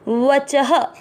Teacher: च में आ की मात्रा तो विसर्ग को पढ़ेंगे ह